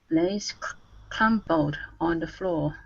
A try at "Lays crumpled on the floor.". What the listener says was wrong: Okay, now here we have that R sound, so it's cr instead of call. Okay, it's crumpled. Crumpled.